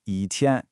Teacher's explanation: if it comes before a first, second, or third tone word, it drops down into a heavy fourth tone. For instance, before the flat first tone tian, it becomes yi tian.